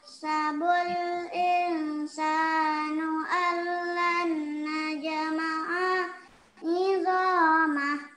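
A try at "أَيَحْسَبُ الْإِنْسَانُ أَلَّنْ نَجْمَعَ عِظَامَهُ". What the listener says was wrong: Pada bagian najma'a ini seperti tadi, A-nya itu jangan dipanjangkan nak ya. Najma'a, A-nya itu jangan dipanjangkan. Ayah sabul insanu allan najma'a izamah. Langsung aja.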